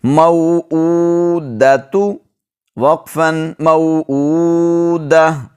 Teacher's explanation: موعودۃ ایسے بھی نہیں پڑھنا، مو یہ واو لین ہے، اس کو تھوڑا سا لمبا کریں گے، نرمی کے ساتھ ادا کریں گے۔ مو آگے او یہاں کھینچیں گے، دال پر آواز نہیں کھینچیں گے۔